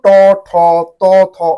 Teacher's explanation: দ্বিতীয় এই ধ্বনি মানে প্রত্যেকটাই দেখো ট ঠ ত থ অর্থাৎ বর্গের প্রথম এবং দ্বিতীয় এই ধ্বনিগুলোকে বলা হয় অঘোষ ধ্বনি